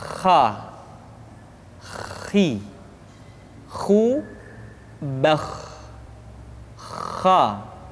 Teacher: K dikeluarkan dari pangkal tenggorokan. · Kha, pangkal tenggorokan. Diucapkan dengan mengalir nafas. Atau lebih praktisnya, pengucapan huruf kha persis terdengar seperti orang yang tidur dalam keadaan mengorok.